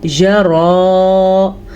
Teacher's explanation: را کو پر پڑھنا ہے کیونکہ را کے اوپر کھڑی زبر ہے۔ یہ یا سائلنٹ ہے، صرف لکھنے میں آتا ہے، یہ پڑھنے میں نہیں آتا۔